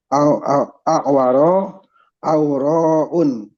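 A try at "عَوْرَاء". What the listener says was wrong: Enggak pakai tanwin, Pak. A'waru.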